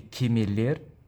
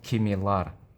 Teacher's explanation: Kemeler, sheeps. Ye is a front vowel, so we use ending ler, not lar.